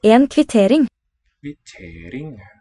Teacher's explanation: The non-initial stress makes me think it's not a Germanic word.